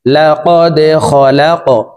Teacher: লা কদে, খ জবর খ, লাম কফ জবর লা, কফ কলকলার হরফ উপরের দিকে ধাবিত করে ধাক্কা দিয়ে উচ্চারণ করব